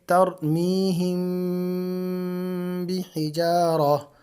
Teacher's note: میم ساکن کے بعد یعنی میم جزم والی کے بعد با آ جائے تو وہاں پر بھی غنہ ہوتا ہے